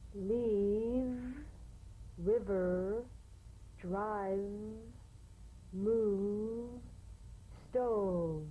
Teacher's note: This is voiced fricative labiodental, upper teeth to lower lip. Feel the teeth planted right in the lower lip.